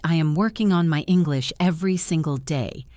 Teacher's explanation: I did not say every word with the same strength. I stress the words working and day.